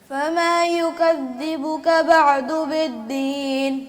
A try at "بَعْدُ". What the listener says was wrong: بعد نہیں، باع یعنی عین پہ قلقلہ ہو گیا، یہ نہیں ہونا، بعد،